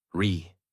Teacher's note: Voice rises and falls. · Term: Natural American tone